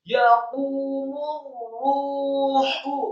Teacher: Setelah mim yang marfu atau dhammah disambungkan ke huruf ra yang tasydid, isti'la bergetar dan tebal.